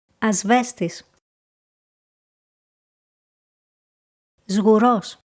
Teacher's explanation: The letter σ sounds more like the letter ζ when it is followed by the letters β, γ, δ or μ.